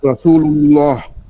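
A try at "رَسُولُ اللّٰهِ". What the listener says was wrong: পুর করলেন, কিন্তু রাসূলুল্লাহ এটা রাটা হয়ে গেল না, এটা র হবে না।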